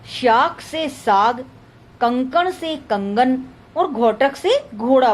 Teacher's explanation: घोषीकरण, अघोष व्यंजन का घोष हो जाना